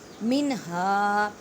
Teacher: نون ساکن کے بعد ہا ہے اور ہا حروف ہلکی میں سے ہے، اظہار کا قاعدہ کریں۔